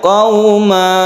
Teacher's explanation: Panjang satu alif apabila kita berhenti. Akan tetapi di sini ada tanda waqaf. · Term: mad iwad